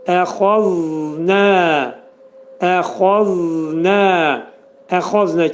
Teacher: zəl hərfi dilimiz iki dişin arasına xəfif girəcək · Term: pəltək z